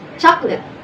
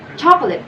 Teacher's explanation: in English many people pronounce it as chocolate reducing the middle syllable into aw well in some other languages it pronounced more distinctly